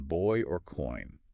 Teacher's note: Oi, as in boy or coin. >> This glide starts with the merged a sound that open back. Ah, and it glides forward to end in the i sound. >> But the lips do something unique here. · For oi, the lips need to be already somewhat rounded and pushed forward right from the start of the sound when you're making the I.